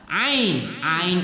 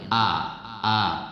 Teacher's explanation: Ain Itu posisinya pada tengah tenggorokan sedangkan Hamzah adalah bagian dalam tenggorokan